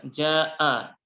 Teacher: mad wajib muttasil wajib dibaca panjang 4 sampai 5 harokat